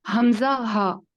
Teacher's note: یہ وسط الحلق سے نیچے یہ چیسٹ کی طرف پریشر کے ساتھ اس کو بولا جاتا ہے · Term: حمزہ اور ہا